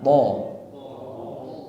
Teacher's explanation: Kemudian po tebalkan dan jangan ada hamas atau hembusan udara.